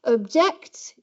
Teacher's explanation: If you say object, then you have a fall from the first syllable. Object, you can hear it rising to the second syllable and falling again.